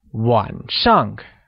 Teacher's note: 晚 is pronounced in the falling rising tone, meaning night